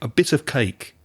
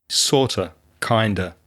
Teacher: and a similar thing happens with kind of and sort of the of gets very very weak